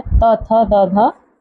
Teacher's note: दंत व्यंजन त वर्ग, जो आपका त वर्ग है, त, थ, द, ध, ये सभी क्या हैं? दंत व्यंजन कहलाते हैं।